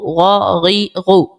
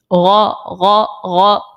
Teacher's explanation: غین زبر غا, غین زیر غی, غین پیش غو, غا غی غو, ٹھیک ہے. وہ جو غرارے میں آواز آ رہی ہوتی ہے وہی ہم نے غین اس طرح سے نکالنا ہے. بس اس چیز کا خیال رکھنا ہے کہ حلق کے اوپر والے حصے سے وہ آواز نکلے.